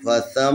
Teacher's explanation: یہاں میم ہے، میم میں مشدد ہے لذا اس کے اوپر غنہ کریں گے